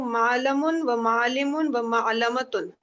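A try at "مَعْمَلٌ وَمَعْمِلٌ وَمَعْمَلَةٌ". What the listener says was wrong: बस एंड पे देखिए मीम पहले है ना, तो मामलुन, फिर मामिलुन, फिर मामलतुन, ठीक है। मीम पहले है, लाम से पहले मीम है, ठीक है।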